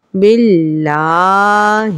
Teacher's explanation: یہاں پہ با کے نیچے زیر ہے، یہ جو علامت نیچے لائن لگی ہوئی ہے اس علامت کا نام زیر ہے۔ اللہ عز و جل یعنی اسم جلالت سے پہلے زیر ہونے کی وجہ سے لفظ اللہ عز و جل کو باریک پڑھیں گے۔